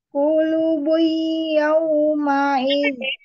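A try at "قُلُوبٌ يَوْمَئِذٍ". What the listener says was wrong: Hmm, bigunahnya, idghamnya masih lagi dilupa.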